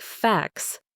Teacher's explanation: The T sound in facts was gone. It sounded like facts.